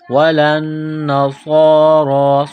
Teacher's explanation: صاد کو موٹا کرنا ہے، را کو موٹا کرنا ہے، ایک الف کے لمٹ میں کھینچنا ہے